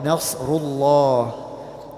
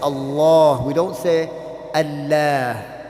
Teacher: Then we have the word Allah, Nasrullah. The word Allah is usually recited or read with a heavy sound.